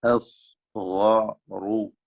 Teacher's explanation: സ്വാദ് ഗൈന് റാ, 3 തഫ്ഖീമിന്റെ അക്ഷരങ്ങളാണ്. തടിപ്പിച്ച് ഉച്ചരിക്കുക, കനപ്പിച്ച്.